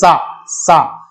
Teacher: ये बोला जाएगा दांत के बल से, और इसीलिए इसको कहा गया दंतीय वर्ग।